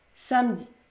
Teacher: Je ne prononce pas le E. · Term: E muet